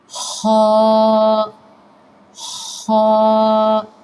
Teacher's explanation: ادنی حلق سے اس کو ادا کریں اور ہونٹوں کو گول نہیں کرنا کہ آپ موٹا کرنے کے لیے آپ ہونٹوں کو گول کر دیں، ایسا بالکل نہیں کرنا۔